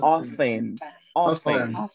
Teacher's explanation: in this case, we say the T is not pronounced. It's mute.